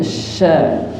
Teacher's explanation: Shin titik 3 sya niku sejatinya bukan huruf tebal sebagaimana so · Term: tafasyi